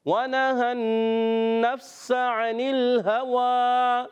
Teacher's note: تو انل ہوا، ہا پر زبر، واو پر کھڑا زبر، تو ہا کو نہیں کھینچنا، واو کو ایک کھینچ دیں گے